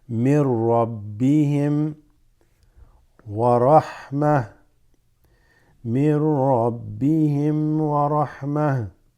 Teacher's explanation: You go straight to the ra from min. So it becomes من ربهم ورحمة.